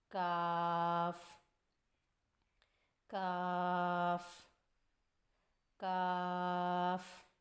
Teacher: کاف کی ادائیگی میں زبان کی جڑ کو کوے کے قریب تالو پر لگا کر باریک آواز میں پڑھیں